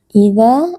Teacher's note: Mad Thobi'i karena ada Alif sebelumnya berharakat fathah dibaca panjang dua harakat